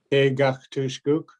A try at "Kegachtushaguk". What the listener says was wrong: Kegachtusha. We just gotta keep that sha in there. Kegachtushaguk.